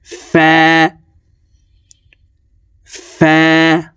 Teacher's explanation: ফা হরফ উপরের দাঁত নিচের ঠোঁটের পেটের সঙ্গে লাগিয়ে উচ্চারণ করতে হবে। ফা একালিপ টেনে পড়তে হবে।